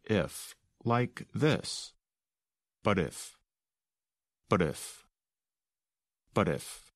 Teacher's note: we don't really pronounce the letter T in the word but instead it sounds almost like the letter d and connects to the word